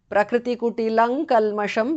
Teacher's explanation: Prakritikutilang kalmasham, because of sandhi. Anuswara changes to nga there.